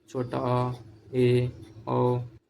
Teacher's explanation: अर्धवृत्त स्वर मुख आधा खुलेगा, जैसे बोलिएगा छोटा आ, ए, ओ, मुख आधा खुलता है।